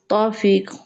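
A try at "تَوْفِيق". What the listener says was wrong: توفیق، قاف کے ساؤنڈ ہم قا بولیں گے. آپ نے ہجوں میں ٹھیک بولا ہے، رما میں بھی ٹھیک بولیے. توفیق، توفیق، قا یہ بولیے پہلے. حلق کے اندر رکھیں اس کی آواز نا. وہ جو گوشت کا ایک نرم سا ٹکڑا تالو میں لٹک رہا ہوتا ہے، ٹھیک ہے، جس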